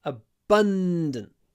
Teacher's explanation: a long n before a d